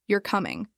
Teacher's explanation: You're not sure if the person is coming or not. If your voice stays flat, you're coming. It might sound like you're bored or annoyed. And if your voice falls slightly, you're coming.